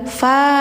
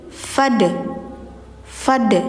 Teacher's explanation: alif di sini jangan panjang teman-teman ya tapi langsung ke si dal karena dalnya mati jadi enggak fa Tapi fad fad gitu.